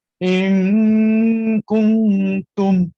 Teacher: jelas sembunyinya nun ke dalam huruf kaf itu. Nanti saya akan cerita lebih detail lagi kenapa nun tu lambat masuk ke kaf. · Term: ikhfa